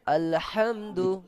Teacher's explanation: শুধুমাত্র হারাকাত আছে সেই কারণে শুধু একার মধ্যে উচ্চারণ হবে এবং তাড়াতাড়ি